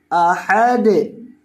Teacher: احد، حمزہ کے اوپر زبر ہے اور ہا کے اوپر بھی، اور ہا کو دال کے ساتھ ملائیں گے اور دال ساکن ہونے کی وجہ سے دال کو ہلا کر پڑھیں گے